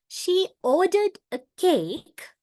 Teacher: In here, two syllables are stressed. O in ordered, and the other one is cake. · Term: tonic syllable